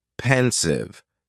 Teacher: just two syllables and the stress is on that first syllable